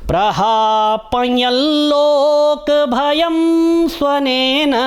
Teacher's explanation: जो चंद्र बिंदु है यहा पर अर्ध अनुस्वार है तो नेजल साउंड आएगा हल्का सा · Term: अर्धानुस्वार